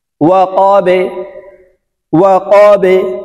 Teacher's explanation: ওয়াও জবর ওয়া, কফ বা জবর কবে, ওয়া কবে। বা উচ্চারণ করার সময় নিচের দিকে ধাবিত করে কলকলা করে উচ্চারণ করতে হবে